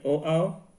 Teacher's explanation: ये वर्ण जो होते हैं कंठ और ओष्ठ की सहायता से बोले जाते हैं, यानी इनको बोलते समय कंठ और ओठ की सहायता लेनी पड़ती है, इसलिए इन्हें कंठोष्ठ भी कहा गया है।